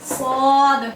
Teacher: सीटी की सिफत भी है, सीटी की आवाज आनी चाहिए, सीटी की आवाज आएगी सौद। इतबाक की सिफत भी है सौद में, तो में भी थी, तो इसको और मोटा करके पढ़ेंगे